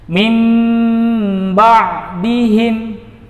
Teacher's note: menempelnya 2 buah bibir secara sempurna namun ditempel secara lunak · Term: iqlab